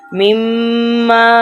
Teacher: اب یہ مما پہ بھی گنہ ہو رہا ہے، ناک میں سے آواز نکالیں گے